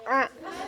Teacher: huruf a ini terletak atau keluar dari halqi, dari halqi, dari tengah-tengah tenggorokan a. Kemudian cara keluarnya itu ihtikaki atau adanya gesekan. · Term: huruf a atau ain